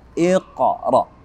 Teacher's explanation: Ada huruf qaf yang mati. Qaf sukun, dia berada pada awal surah atau awal ayah. Maka hukum tajwidnya adalah qalqalah sughra.